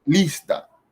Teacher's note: No lleva tilde, ¿por qué? Porque al ser una palabra grave que lleva el acento en la penúltima sílaba